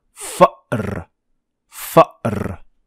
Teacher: this little stop in your throat that is the sound the Hamza